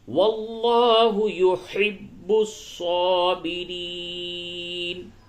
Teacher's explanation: یہ لام کو پر کریں گے کیونکہ لفظ اللہ کے لام سے قبل زبر ہے